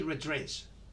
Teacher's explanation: instead of saying red dress, we say red dress, only one D